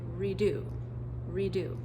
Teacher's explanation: if we add a prefix, how about we add the prefix re? Again, no stress on that prefix.